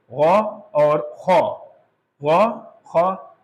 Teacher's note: Conditionally ہم ان کو موٹا پڑھیں گے، یعنی جو ادائیگی کی کیفیت ہوگی وہ موٹا پڑھنے کی ہوگی. تو ان دونوں حرف کو حلق کے آخری حصے سے نکالنا ہے اور موٹا کر کے نکالنا ہے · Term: موٹے حروف